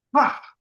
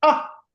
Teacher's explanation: Ah very slow air coming out. When you say h strong air coming out when you say ah no air coming out